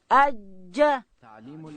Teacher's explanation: جیم ادا کیږي د ژبې منځ به لوړ تالو ته وروړو